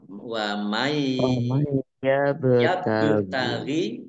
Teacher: ba sukun bacaan qalqalah dibaca memantul, ditambahkan pantulannya